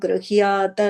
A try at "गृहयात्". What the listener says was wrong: And the ha, you are just making it a half ha when you're saying it. It's a full ha, right?